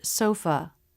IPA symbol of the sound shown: ə